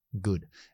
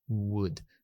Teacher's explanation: Sí que hay una zona velar con la W que utilizamos, pero no toca, no es oclusiva, no es G y suelto, sino would.